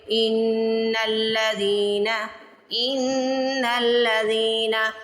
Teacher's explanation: زال کو سٹریچ کرنا ہے. زال زیر کے بعد یا ساکن آ رہا ہے تو زال کو کھینچ کے ادا کریں گے